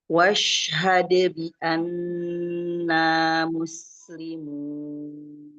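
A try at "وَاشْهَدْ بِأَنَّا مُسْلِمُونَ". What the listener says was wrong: Nah, itu sinnya harus jelas makhrajnya, tidak ke sa ya. Jadi ujung lidahnya tidak menyentuh ujung gigi seri atas ya, tidak ya. Jadi dia kalau lebih mendekati, malah lebih mendekati ke ujung gigi seri bawah ya.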